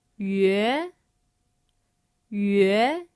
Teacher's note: The second tone, which is a rising tone.